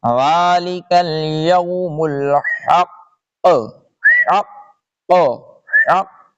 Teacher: یہاں پہ جب وقف کریں گے تو یہ جو قاف کے اوپر پیش ہے یہ چلا جائے گا